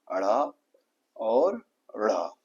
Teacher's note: ऊपर उठकर एकदम जीवा झटके के साथ नीचे गिरे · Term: उत्क्षिप्त